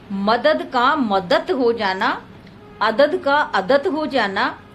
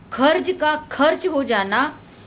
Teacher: जहां कोई सघोष ध्वनि कालांतर में अघोष में परिवर्तित हो जाती है, उसे अघोषीकरण कहते हैं।